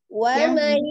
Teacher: Tadi ada nun sukun ketemu dengan ya-nya idgham bi gunnah ya. Gunnahkan dulu wa mai gitu ya.